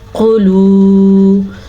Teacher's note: آپ دھیان دیں کہ میں قاف کو پر یعنی کہ موٹا بھی پڑھ رہی ہوں